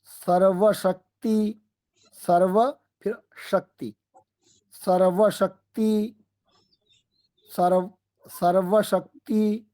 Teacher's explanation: पहले दंत्य सकार फिर तालव्य सकार